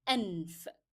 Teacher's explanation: As for nose in English, in Arabic it means anf. And here, noon is the letter that is carrying sukoon. It is coming in the middle position, and we have to stop on it a bit before we carry on to the following letter